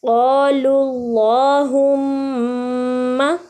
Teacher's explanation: ایک تو قا موٹا ادا ہو رہا ہے، پھر لو کی جو لام ہے وہ باریک ادا ہو رہی ہے، لیکن اللہم کی جو لام ہے وہ موٹی ادا ہو رہی ہے